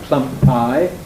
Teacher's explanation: the second P that's the p in pi is fully aspirated in Plum Pi it's not fully aspirated in plumi because it's not syllable initial